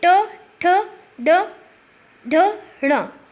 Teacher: बोलते समय हमारी जीवा पूरी तरह तालु को नहीं छूती, तालु के एक सिरे को छूती है। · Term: मूर्धन्य व्यंजन